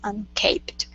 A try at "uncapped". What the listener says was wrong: Okay, and that last word is uncapped instead of uncaped. Uncapped. Yeah, if there was only one P, then that would be uncaped.